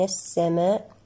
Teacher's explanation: اللام هنا في كلمة السماء لام شمسية مدغمة. كلمة السماء هنا لدينا مد متصل واجب يمد أربع أو خمس حركات في حالة الوصل.